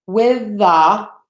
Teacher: two words have the same sound at the end and then at the beginning we're only going to say that th once